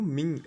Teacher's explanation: O n, nesse caso, é só para indicar a nasalização do i, e não indica uma consoante. Na pronúncia, ele nem é pronunciado, a gente pronuncia o i nasalizado.